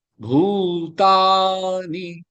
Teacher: பூதா ரெண்டுமே நெடில் எடுத்து நீ ஷார்ட் ஆக்கணும்